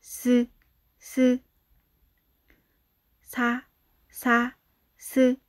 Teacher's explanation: 시옷은 스라는 발음을 할때 이 사이로 바람이 슝 나와.